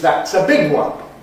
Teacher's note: we don’t accent <one> when it follows an adjective, when it doesn’t really mean the number ‘one’